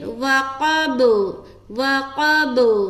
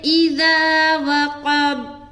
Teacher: با کے اوپر جب اسٹاپ کریں گے تو قلقلہ کریں گے, کیونکہ با حروف قلقلہ میں سے ہے.